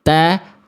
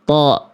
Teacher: Huruf ta vokalnya A tipis, huruf to vokalnya tebal, gemuk bunyinya.